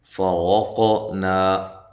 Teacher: را کو موٹا کریں، قاف پہ قلقلہ کرنا ہے، قاف کو ہلانا ہے